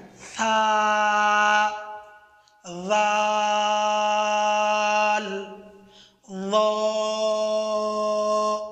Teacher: জিহ্বার আগা ও উপরের দাঁতের বিতর্গত কিনারা থেকে উচ্চারিত হয়। উপরের, উপরের দাঁত আছে ওইটার বিতর্গত কিনারা থেকে জিহ্বার আগা। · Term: হরফে লিসাভিয়া